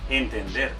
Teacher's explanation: porque es aguda porque el acento en la última sílaba